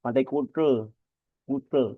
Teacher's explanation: Kalau orang Bali mengucapnya pantai Kute Kute jadi lidah itu kayak dilipat ke dalam